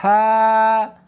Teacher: جیم، اس کو حلق میں سے نکالنا ہے اور ساتھ میں ہوا بھی ہونی چاہیے۔ ہا، ہا نہیں پڑھنی بلکہ اس کو حلق میں سے نکالنا ہے، سینے میں سے نہیں نکالنا